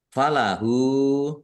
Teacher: domir ha domah terbalik mad silah qosirah panjang dua harakat sama dengan mad thobi'i